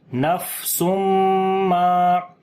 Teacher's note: فا کے اوپر صفت ہمس کریں گے یعنی سانس جاری ہوگا